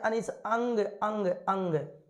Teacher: उच्चारण में नाक से अधिक और मुंह से कम हवा निकलती है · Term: अनुस्वार